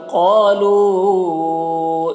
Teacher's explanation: قالو قاف کو پر پڑھیں گے، الف مدہ ہے کھینچیں گے ایک الف کے برابر